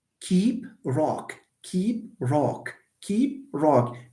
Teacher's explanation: your tongue changes the position for the pronunciation of K As you move from keep to rock why it's because here you anticipate a front vowel but here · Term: palatalization